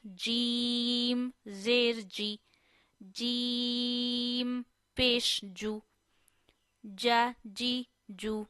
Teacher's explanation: Jeem is pronounced from the middle of our tongue and middle of our palate. It means middle of your tongue, you have to touch your middle side, upper side, middle of palate.